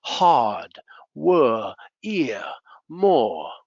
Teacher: The R is a little bit weak, hard, were, ear, more. You don't hear the R